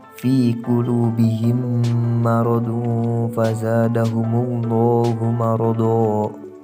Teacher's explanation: menyuarakan mim rangkap atau ditasydidkan dan wajib dibaca dengung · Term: idgham mimi